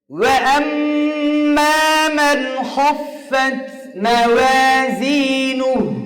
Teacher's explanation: মিম ঠোঁট লেগে যাবে একদম ভিজা অংশ থেকে